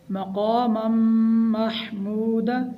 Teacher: یہاں پر میم میں ہم غنہ کریں گے، غنہ کی مقدار 1 الف کے برابر ہے۔